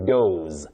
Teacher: Doze with the sound Z, what we call the voiced sound Z.